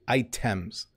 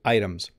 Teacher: items and products so i don't say items i say items we often do that with our t's we flip it to a d or we flap it